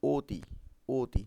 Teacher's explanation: ও এর মতো, তাই না? তাহলে লেখা আছে অ, উচ্চারণ হচ্ছে ও এর মতো। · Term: সংবৃত উচ্চারণ